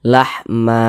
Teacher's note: dibaca lahma dipanjangkan Dua harakat Mad iwad